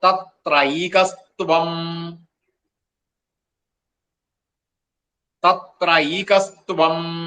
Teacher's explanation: വരുക അപ്പോ തത്രൈക ത്വം അടുത്തത് ത്വം എന്നാണ് അപ്പോക എന്നുള്ള വിസർഗ്ഗവും പിന്നെ ത്വം എന്ന് കൂടുമ്പോൾ ആ വിസർഗ്ഗം സകാരമായിട്ട് കസ്ത്വം എന്നാവും